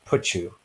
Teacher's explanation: So we're kind of combining the t and the y. So basically put and you become put you.